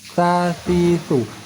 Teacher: Maka angin keluar di sisi celah-celah ujung gigi dan ujung lidah. Sa-si-su. Ujung lidah dengan ujung gigi tetap bersentuhan. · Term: huruf za